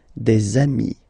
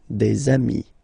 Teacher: if you make the liaison, so the link between the two, you will get des amis